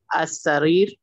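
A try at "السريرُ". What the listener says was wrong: You need to read the last vowel also. He's asking you to read the last vowel. Zabti Awakhir al-Kalimat. Last vowel. As-Sarir. As-Sariru.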